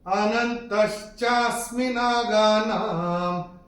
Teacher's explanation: पहले चरण में चरण की समाप्ति पे न के ऊपर अनुस्वार, चूंकि चरण की समाप्ति पे आ रहा है, इसका उच्चारण केवल और केवल म ही होगा